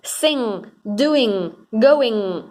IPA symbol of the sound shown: ŋ